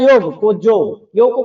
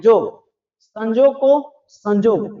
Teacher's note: य को ज के रूप में लेते हैं।